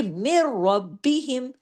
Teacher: ادغام تام بلا غنہ، یعنی ادغام ایسا کہ کوئی غنہ نہیں